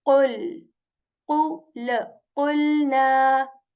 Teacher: I'm joining the sound of qaf here with lam because lam has this sakin symbol on it